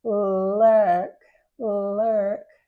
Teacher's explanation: you just draw the tongue back a little bit so that it's not touching the teeth but it's still curved and the tongue is flat